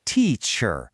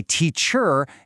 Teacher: See the emphasis, that beat is on the first part. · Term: word stress